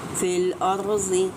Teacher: را ساکن ما قبل زبر ہے تو را کو ہم پر کر کے ادا کریں گے۔